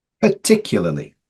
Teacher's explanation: be careful with this first A because we have a schwa sound here